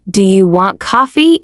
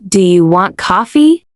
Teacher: It sounds like you're making a statement or maybe giving an order. But if you let your voice rise slightly at the end, do you want coffee? It suddenly becomes an inviting, friendly question. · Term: sing song quality